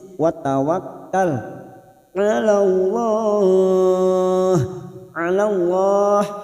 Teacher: Anhum watawak masuk pada huruf kaf yang bertasdid watawakkal 'ala Allah lam jalalah kita baca tafkhim karena sebelumnya fathah